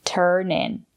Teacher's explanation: It's a phrasal verb. We stress both words